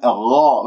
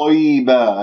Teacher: والغين هنا مفخمة مرتبة ثانية لأنها مفتوحة